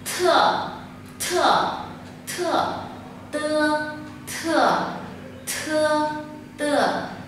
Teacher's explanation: Còn bật hơi, bật hơi thì không phải là âm thờ của tiếng Việt, bởi vì nếu âm thờ của tiếng Việt thì nó quá nhẹ, mà đây là âm tờ chúng ta bật hơi mạnh ra